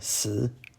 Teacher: If you clicked on this video looking for how to say die in Chinese, this is the character. Third tone, si.